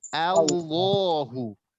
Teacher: Karena hamzah tersebut bukan tafkhim, bukan tebal, tapi tipis.